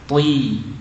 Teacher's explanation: Meskipun hurufnya tebal, bunyi kasrohnya tetap i.